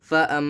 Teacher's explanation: मीम पर गुन्ना करें।